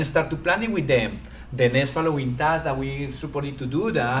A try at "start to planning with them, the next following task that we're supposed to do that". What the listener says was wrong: Now hold on, what's happening right now is everything is going very fast, so there's nothing that's long. There's nothing that's long, okay? So you have to make sure you throw in long syllables and not just go really fast.